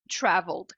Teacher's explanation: do L você já pula pro D